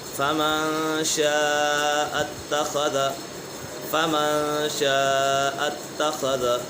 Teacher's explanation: یہاں نون سکن کے بعد شین اور حرف اکفا میں سے تو یہاں غنہ ہوگا۔